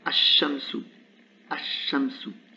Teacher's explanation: la voyelle de liaison reste, puisqu'on est en début, et le lam disparaît, puisque la lettre shin est solaire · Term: lettres solaires